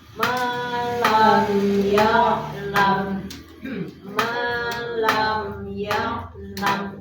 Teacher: kalau idhar syafawi itu jelas, tegas, tidak boleh dengung ya, tidak boleh dengung, tidak boleh loncat.